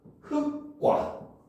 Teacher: 여기에 과가 합쳐졌으니까 기읍 때문에 기읍이 쌍기읍으로 발음돼서 발음을 하면 흑과 이렇게 발음해야 된다는 거죠